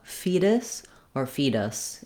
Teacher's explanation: The most important thing here is that you have a reduced vowel that's short. You don't want to spend a lot of length on it